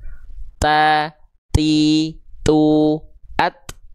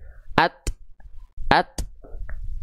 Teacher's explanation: Nah, percikan nafas yang tadi kita maksud ketika ujung lidah sudah terlepas dari pangkal gigi atas, ketika proses melepasnya itu keluar percikan dari sana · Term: hams